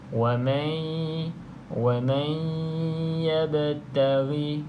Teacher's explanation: Bacaan dengung kita masuk ke dalam huruf ya. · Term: idgham ma'al gunnah